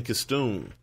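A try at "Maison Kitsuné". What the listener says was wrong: You said Stoon, but the T comes before the S.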